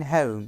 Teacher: The glide begins from position of the sound /ə/ moving up towards /ʊ/ sound which is in the back, close position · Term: /əʊ/ diphthong, O diphthong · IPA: /həʊm/